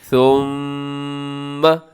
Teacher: میم مشدد ہے، ثم، ایسے آواز کو ناک میں لے کے جائیے گا. جب بھی میم کے اوپر شد نظر آئے، نون کے اوپر شد نظر آئے، اپنے غنہ کر دینا ہے، مطلب آواز کو ناک میں لے کے جانا ہے. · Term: غنّے